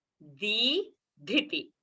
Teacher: Di, alpa prana, dhi, mahaprana, but a rasva sound. So both has to be distinctly heard.